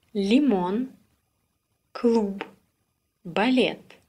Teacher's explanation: Like L in English pill, but with the tongue further back in the mouth.